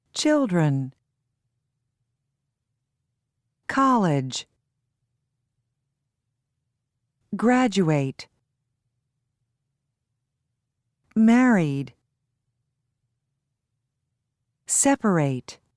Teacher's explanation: Stress on first syllable.